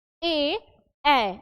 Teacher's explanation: जीव के आगे वाले भाग की सहायता से यह शब्द जो है वह उच्चारित हो रहे हैं इसीलिए यह क्या हुए अग्र स्वर हुए ठीक है आप प्रैक्टिस